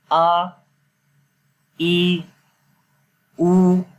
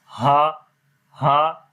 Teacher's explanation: تو بعض لوگ اس کو ہا پڑھ دیتے ہیں، جب زبر کے ساتھ پڑھتے ہیں تو پڑھتے ہیں ہا ہا. تو یہ ہا نہیں پڑھنا، اس کو آ پڑھنا ہے منہ کھول کے اور گلے کے نیچے والے حصے سے آ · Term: حمزہ